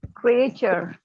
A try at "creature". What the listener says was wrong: बचपन से बड़ा हुआ है क्रिएचर, लेकिन अब सुनिएगा क्रीचर, क्रीचर, नॉट